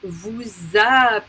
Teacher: we need to do the liaison because we have a vowel okay so that s that was unpronounced now is pronounced as a liaison